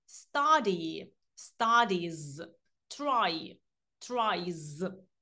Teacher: коли на голосний закінчується слово, також закінчення S вимовляється як Z.